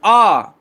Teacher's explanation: जब आप बड़ा आ बोलते हो तो आप पूरा मुंह खोलते हो और आप कहते हो आ। · क्योंकि जब आ बोलते हो तो बिल्कुल गले के नीचे से आवाज आती है दोस्तों, यही पश्च स्वर है।